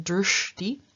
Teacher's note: What happens here is that the palatal sh and the dental t are combined, and both of them change into their retroflex counterparts, so we get drishti, meaning sight.